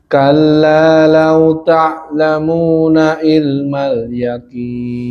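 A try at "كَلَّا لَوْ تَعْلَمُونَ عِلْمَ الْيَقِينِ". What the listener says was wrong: Tekan ainnya.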